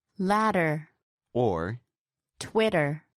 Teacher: even though the words are spelt with a D and T, the sound that is made is with the tongue tapping the roof of the mouth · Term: flap